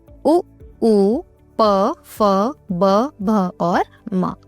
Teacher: द्वयोष्ठय यानी जिसमें दोनों होठों का प्रयोग होता है